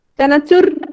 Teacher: জিভের মাথাটা যেহেতু কাঁপছে, তাহলে কিসের কারণে কাঁপছে? র এর কারণে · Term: কম্পনজাত ধ্বনি